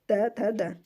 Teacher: और ल और स ल और ये वाला स क्या दंत जिनका उच्चारण ऊपर के दांतो पर जीव लगाने से होता है